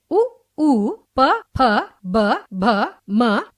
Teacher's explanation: जिन वर्णों के उच्चारण में जीभ के सहयोग से ओष्ठ परस्पर मिलकर कार्य करते हैं उन्हें ओष्ठ्य वर्ण कहते हैं।